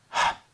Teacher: Here's a very breathy sound for the letter H. H. Almost difficult to hear.